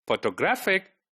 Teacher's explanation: the second last one is stressed